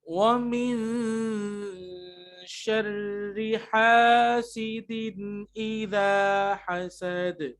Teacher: نون ساکن کے بعد شین ہے تو اخفا ہے. ٹھیک ہے, اخفا جو ہم لکھ رہے ہیں یہ آ گیا اخفا. · تنوین کے بعد حمزہ ہے تو یہاں پہ بھی اظہار ہوگا